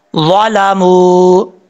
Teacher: یہاں پر واو کے اوپر مد ہے اس مد کو مد منفصل کہا جاتا ہے اور اڑھائی الف کے برابر جو ہے اس کو لمبا کیا جاتا ہے